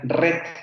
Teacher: en escocia si hay zonas en donde se pronuncia con la vibrante múltiple